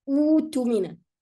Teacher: In this case, if I'm going to start with this word, I drop the hamza and I keep the waw. So it becomes utumina.